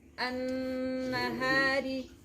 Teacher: It's a an-nahari, an-nahari, and now noon has shadda, and you will learn the rule of ghunna. There is a ghunna nasal sound as well.